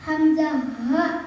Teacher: Hamzah, ha, makhrajnya pangkal tenggorokan.